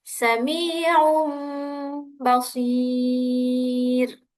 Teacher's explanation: mengganti huruf nun sukun atau tanwin menjadi mim apabila bertemu dengan huruf ba disertai dengan ghunah selama dua harakat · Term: iqlab